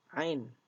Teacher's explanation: Nah, ya, hurufnya a seperti ditekan. A seperti ditekan adanya di tengah-tengah tenggorokan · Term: huruf ain